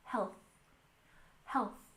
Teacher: And don't forget to really make this TH sound with health. Remember to stick your tongue between your teeth.